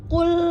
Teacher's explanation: huruf qo ada di mana pangkal lidah ya yang paling lunak yang paling dalam